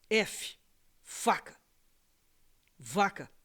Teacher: v f de novo é labial